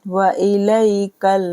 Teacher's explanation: یا ساکن سے پہلے زبر ہے تو یا لین ہو رہا ہے